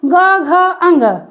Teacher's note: जैसे आएंगे ग घ अंग, यहाँ पे झंझनाहट सी महसूस होगी, हल्का कंपन होगा, तो वो सघोष के अंतर्गत आता है